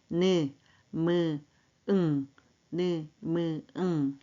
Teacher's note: 비음은 코비자예요. 그쵸 코로 공기가 나오는 소리 비음. 그리고 코로 막아버리면 소리가 코맹맹이 소리가 나는 소리입니다.